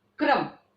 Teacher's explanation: इसमें जो क है वो स्वर राहित है, रा जो है वो स्वर साहित है, पूरा है। क्रम, रा की आवाज पूरी आ रही है और का की आधी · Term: पदेन रूप